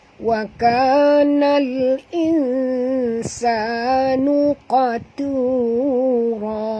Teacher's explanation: Qaf ni tebal, jangan baca nuqatura, bukan qatura tapi qatura ya. Qaf ni tebal, tu ni tak tebal ya.